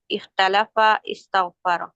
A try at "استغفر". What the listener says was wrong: Very good, زبردست، بہت اچھا.